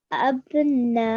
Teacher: Take a deep breath first and then stretch for 4 counts for the na. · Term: Madulkabir